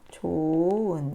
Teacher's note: 자, 그 다음에 이 부분은 히읗 탈락이 되는 거죠. 예, 모음으로 시작하는 어미 앞에서 히읗 탈락되는 거